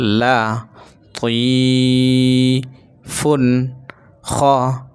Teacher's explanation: তানবিনের পরে এই যে খ ইজহারের হরফ, তাহলে এটাকে গুণনা করা যাবে না। এই ফুন ফুন এভাবে পড়তে হবে, ফুন এভাবে বলা যাবে না।